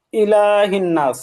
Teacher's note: ইলাতে টান হবে আর শেষে হচ্ছে অজীব গুন্না আর মাদ্দে আরজি